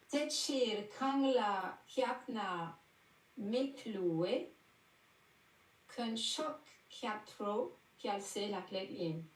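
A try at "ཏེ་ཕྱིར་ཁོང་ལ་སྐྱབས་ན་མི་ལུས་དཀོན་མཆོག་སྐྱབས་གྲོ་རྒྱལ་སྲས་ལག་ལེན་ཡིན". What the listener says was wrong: Impeccable. Voilà.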